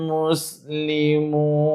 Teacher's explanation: wau kosong hujung ayat tuan puan boleh baca 2 empat atau enam harakat